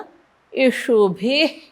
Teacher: विसर्गाच्या पुढे प आलाय म्हणून विसर्गाचा अर्धा उच्चार